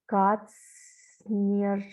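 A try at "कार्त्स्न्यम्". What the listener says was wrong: Katsnyam. Katsnyam. Kara should be heard first. then ta, then sa, na, and ya. Kartsnyam, Kartsnyam.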